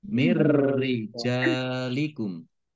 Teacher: Jadi masuk dengan tidak mendengung. Tapi langsung masuk ke huruf ro tapi tidak mendengung. Ro-nya dibaca double saja. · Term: idgham bila gunnah